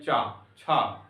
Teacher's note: हम तालु से बोलते हैं, ये हमारा जीभ जो है जाके वहां से स्पर्श होता है